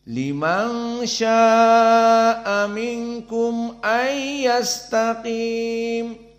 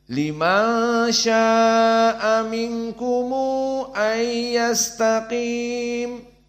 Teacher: Minkum. Maka mim al-jama' di sini dalam keadaan didomahkan dan ada dua mad, seperti mad silah pada ha. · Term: silatul mim al-jama'